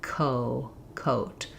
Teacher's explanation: So when I'm saying koh, my mouth can already be kind of open for that o and I'm just lifting the tongue in the back.